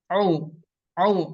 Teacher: huruf ain keluarnya dari tengah tenggorokan